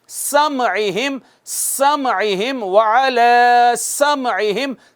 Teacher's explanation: سین پہ سیٹی لگانا ضروری ہے، سیٹی بجانا ضروری ہے